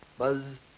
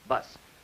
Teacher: And in bus, you will notice there is no buzzing on that S sound in bus. Buzz, bus. That's a voiced sound versus a voiceless sound.